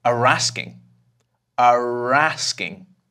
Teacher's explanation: In British English, 'are' is most often pronounced as /ə/